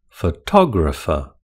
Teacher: Photographer has four syllables with the stress on the second syllable.